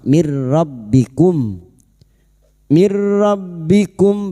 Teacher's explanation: Nun sukun atau tanwin yang bertemu dengan dua huruf yaitu huruf lam dan ro masuk tanpa mendengung. Masuk pada huruf ro tanpa mendengung, tanpa ditahan lama-lama. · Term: idgam bila gunah, idgham bila guna